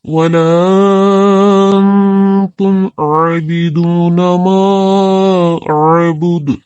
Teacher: نون ساکن جو ہے یہ نون گنہ ہو جائے گا، یہاں پر آواز جو ہے وہ ناک میں لے جا کر ادا کرنی ہوگی